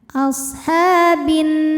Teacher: Kemudian nunnya dihukumi ghunah musyaddadah atau wajibul ghunah atau nun musyaddadah. Karena nun bertasydid maka kita baca dengan dengungan. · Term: gunnah musyaddadah